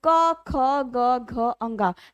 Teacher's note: का वर्ग के सभी व्यंजनों का उच्चारण स्थान कंठ होता है।